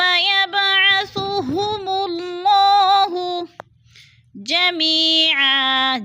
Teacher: یا مدہ کو ہم نے 1 الف 2 حرکات کے برابر لمبا کر کے پڑھنا ہے